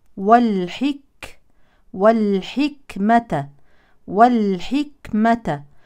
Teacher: ونتم كسر الحاء وهمس الكاف الساكنه